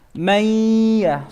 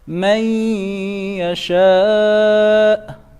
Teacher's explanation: So it's merging of noon sakina into ya. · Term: idgham